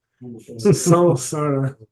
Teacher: So the next letter is S, and you put your tongue where you would say an S, and you make a nasal sound, which happens to be an N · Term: French nasal